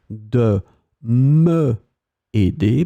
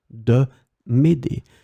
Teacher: you will drop the e because you have a vowel after